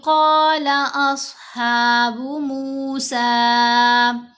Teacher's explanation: صاد کو موٹا پڑھنا ہے، حروف مستعلیہ میں سے ہے